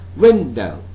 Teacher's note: So win is a stressed one, do is unstressed one. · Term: stressed syllable